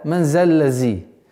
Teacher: одна из самых распространенных ошибок при произношении этого отрывка, когда звук заль переходит в звук зай